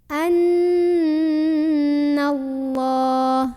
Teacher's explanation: dibunyikan secara tafkhim karena huruf sebelumnya yang non berbaris di atas maka bacanya ditebalkan pangkal lidah kita dinaikkan